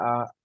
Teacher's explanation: جس طرح ہم اردو میں پڑھتے تھے الف اور الف مدہ، اس کو تھوڑا لمبا کرتے تھے، بالکل تھوڑا سا